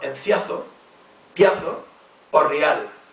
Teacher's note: hay hiatos, o sea, dos vocales que se pronuncian separadas, que se resuelven en dictongos